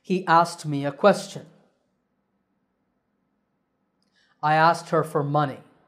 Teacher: the trick to saying it correctly is to make the K silent